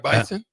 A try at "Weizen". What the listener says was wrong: Yeah, except it's WEI and they pronounce it like a V, Like Volkswagen, yeah.